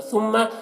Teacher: میم مشدد غنہ کے ساتھ پڑھیں گے